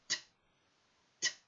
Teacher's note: tongue just behind my top front teeth using the alola ridge I'm completely blocking the passage of the air and as I bring the tongue down we get that explosion of air because the air is compressed in the lungs when the tongue